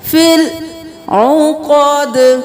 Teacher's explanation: لام کو ساکن رکھنا ہے، ہلانا نہیں ہے ، فی العقد، عقد نہیں کرنا، عین ہے گلے کے درمیان